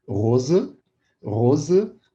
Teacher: a palavra rosa, rosa, né, vibrando bastante o R, rose, ou então rosa, pode ser as duas formas.